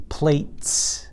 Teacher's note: that is a T in front of it, that's not voiced, so it says S